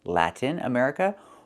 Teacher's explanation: The word is pronounced Latin with a clear T, where you release the T, Latin America, or you can do something else.